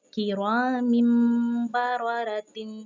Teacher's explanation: تنوین کے بعد کیا آیا ہے، حرف با آ چکا ہے، کرام بررۃ، دونوں را کو ہم نے پر پڑھنا ہے کیونکہ اس پر زبر آ چکی ہے